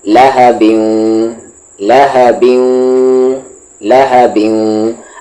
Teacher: تنوین کے بعد واو آ رہا ہے تو ادغام وذ غنہ